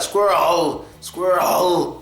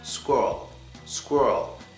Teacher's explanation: When you're saying squirrel, don't try to make the last part of the word stronger. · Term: flat